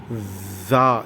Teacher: தா அதற்கு பிறகு உள்ள எழுத்தில் புள்ளி வைத்தால் அதே தாலுக்கு புள்ளி வைத்தால் நாக்கை நீட்டி மேல்பல்லால் அழுத்தி ஜா என்று கூற வேண்டும்